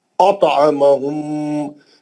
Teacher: अतअमहुम, मीम साकिन का इदगाम शम्सी, इदगाम शरी, इदगाम शफवी हर्फ मीम, मीम साकिन का इदगाम शफवी हर्फ मीम, मीम साकिन के बाद मीम आ गया, इदगाम शफवी हो रहा, गुन्ना करेंगे मीम का